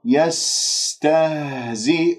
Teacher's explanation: سين يجري فيها الصوت، يجري فيها النفس، رخوة مهموسة ومن أحرف الصفير، والهاء باهتزاز الأوتار الصوتية وتتجلى الصفات في الحروف الساكنة، يستهزئ.